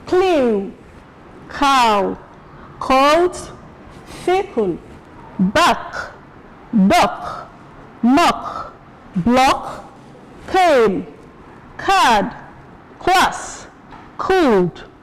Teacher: In comparing them, K is voiceless